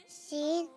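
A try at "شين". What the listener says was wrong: शीन। शीन नहीं है भाई, शीन नहीं आ रहा।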